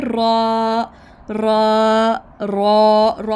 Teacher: जब ज़ुबान की नोक ऊपर दांतों के मसूड़े के साथ लगती है, तो पीछे जो है ना थोड़ी सी मुड़ती है।